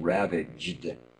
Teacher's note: The GD sounds are really going to take a lot of attention to be sure you've got enough vibration in them. Ravaged. Be sure you feel that vibration.